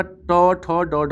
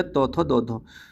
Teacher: मूर्धन्य हो गया आपका ट ठ ड ढ वाले, ये मूर्धन्य हो गए। और दंत्य से तो आपका फिर हो गया त थ द ध